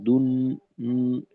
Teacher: এইখানে এইখানে নাকে যাবে, কারণ নুন আছে তো, নুন থাকলে আওয়াজ নাকে যাবে। দুন, নুন মিম এগুলা তো গুন্না ওই নাকে যাবেই।